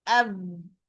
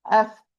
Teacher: There is no running of a lot of air. While fa, it's a voiceless letter. It's harfun mahmus, running a lot of air. F. But if I put all the top of the all upper teeth, it will be av.